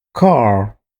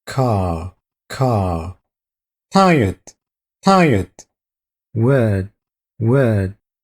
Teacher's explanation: First of all, drop your R's. When there is an R after a vowel in British English, it is silent.